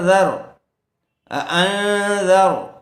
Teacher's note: ذال کو نرم آواز سے ادا کریں گے، را کو پر کیجیے